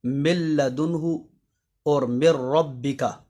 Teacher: یعنی نون ساکن اور نون تنوین کے بعد اگر یا، را، لام، میم، واو، نون جن کا مجموعہ ہے یرملون، یعنی لام اور را کے اندر تو نون ساکن اور نون تنوین اس طرح داخل ہوں گے کہ ان میں غنہ کے ساتھ ادغام نہیں ہوگا